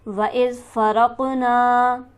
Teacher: वइज़ फ़रक़ना, वइज़ फ़रक़ को जल्दी पढ़ेंगे। क़ाफ पर हमारे पास हरफ कलकला मौजूद है, यहाँ आवाज़ उछलती हुई मालूम होगी। नून पर हमारे पास हरफ मद्दा है लिहाजा इसे हम एक अलिफ के बराबर खींचकर पढ़ेंगे।